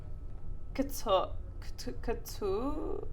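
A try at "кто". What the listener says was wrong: Real close. You just have to kind of read the letters a little bit more smoothly together. So it's kto. Very quickly it goes from K to T. That transition is real quick.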